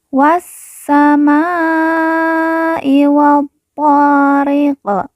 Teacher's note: Wa langsung masuk ke huruf sin. Alif lam tidak dibaca.